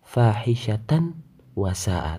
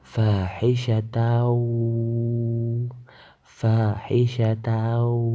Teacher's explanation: Di situ ada tanwin bertemu dengan huruf waw. Cara membacanya, tanwin dibaca lebur dalam huruf waw dan mendengung. Tidak boleh dibaca fahisyatan wasa'a, tapi fahisyatau, fahisyatau. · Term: idgham bi gunnah